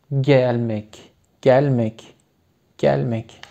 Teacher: Burada açık E olduğu için gelmek, gelmek, gelmek.